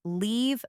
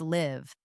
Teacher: Imagine saying, "I must leave for work now." Compared to, "Do you live in the city?" Feel how the sound is longer in leave and quick, almost cut short in live.